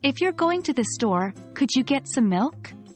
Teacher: Fall at the end of the first idea, before the comma, and rise as you complete the sentence.